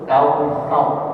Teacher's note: Kausar salah, yang betul kautsar, ujung lidahnya nempel ke gigi seri atas